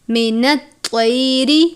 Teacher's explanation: طوا کو پر پڑھتے ہیں، تا کی طرح نہیں پڑھنا